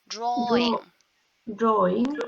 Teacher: when it comes to this word, drawing, we don't say w, just drawing.